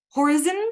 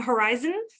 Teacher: Apparently, some folks were saying horizon instead of horizon. So putting the stress on the first syllable.